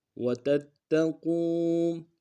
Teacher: قاف کو واو کے ساتھ ملانا ہے، موٹا ادا کرتے ہیں، واو مدہ ایک انداز میں کھینچیں گے.